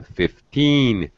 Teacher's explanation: Stress teen, 15. It sounded like 50.